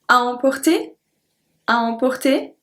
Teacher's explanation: So you just up your voice at the end.